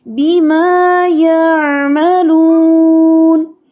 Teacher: عین ساکنہ کو آپ نے جھٹکے سے نہیں پڑھنا